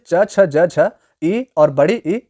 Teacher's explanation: च वर्ण जैसे च छ ज झ ई और बड़ी ई इन सभी का उच्चारण तालव्य से होता है